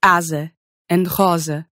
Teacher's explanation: The one case in which you're going to switch over to a voiced Z sound is when you see a lone S in between two vowels. That gives you words like asa and rosa.